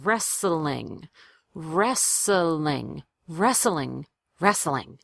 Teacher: if it's difficult to get from the S to the L sound, just add a little schwa there to make it easier.